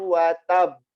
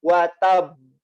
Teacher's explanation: Qalqalah kubro itu qalqalah yang ada di akhir kata, ada di akhir dan berhenti waqaf, dan huruf tersebut bertasydid, gitu ya. Bertasydid sehingga lebih kuat qalqalahnya, pantulannya lebih kuat.